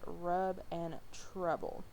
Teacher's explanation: the wedge or the caret, and it's a low mid back central unrounded lax vowel. It's the stress version of the schwa, which is just what we looked at.